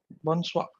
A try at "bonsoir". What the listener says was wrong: Bonsoir. Bonsoir. You have to open your mouth and you have to say soir. Bonsoir. We have to pronounce the R letter. Bonsoir.